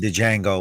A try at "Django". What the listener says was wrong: The D is silent.